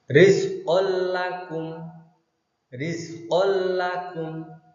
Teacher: nun sukun atau tanwin dimasukkan menjadi satu dengan huruf sesudahnya atau ditasydidkan tanpa berdengung. Contoh bacaan idgham bila gunnah.